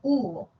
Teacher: la vocal u y la O esas vocales alta posterior y la media posterior